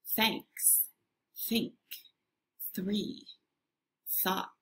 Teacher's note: Your tongue is still sticking out a little, but there's no vibration. Instead, you feel a little air coming out of your mouth.